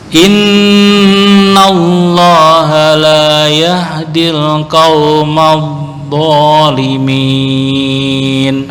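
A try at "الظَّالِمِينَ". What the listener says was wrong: Hampir masuk ke dot nih. Qaumadh-dha.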